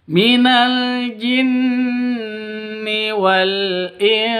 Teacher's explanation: Di sini ada nun mati bertemu dengan sin. Ya, nun mati bertemu dengan sin. Cara bacanya samar didengungkan, siap-siap ke huruf sinnya. Kenapa? Karena bacaan ikhfa hakiki.